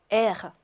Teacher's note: 흐, 가래침을 뱉듯이 좀 발음하셔야 돼요.